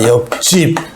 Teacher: 비읍하고 지읒이 빵 부딪히면 결국은 예사소리가 된소리로 난다